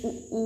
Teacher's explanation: छोटा ऊ बड़ा ऊ ओष्ठ से।